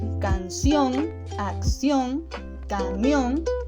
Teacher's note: son palabras con acento que son agudas, ya que se acentúan en la última sílaba